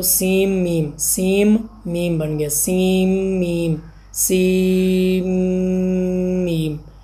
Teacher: تو نون ساکن کے بعد میم آ جائے گا تو یہ نون ساکن ہے، پھر میم آ رہا ہے، نون کا ادغام میم میں کریں گے تو یہ سیم، سیم، سیم، سیم، میم بن گیا، سیم میم۔ سین میم تھا، ملا کے پڑھ دیا تو سیم میم